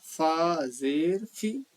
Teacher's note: جو فا ہے وہ پھا نہ ہو یا پھی نہ ہو، وہ فی ہی رہے